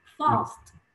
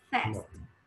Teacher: الصوت نفسه ال الحنجرة مفخمة مضخمة وهي بتتنطق fast